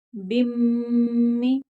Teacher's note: यहाँ मीम मुशद्दद है तो गुन्ना होगा।